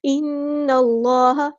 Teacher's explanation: نون پہ غنہ زمانی ہو رہا ہے، ایک الف کے برابر ہم یہاں پہ رکیں گے. نون کو ہم نے لام کے ساتھ ملا دینا ہے.